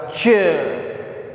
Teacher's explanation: उच्चारण के बाद का भाग संघर्षी हो जाता है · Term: स्पर्श संघर्षी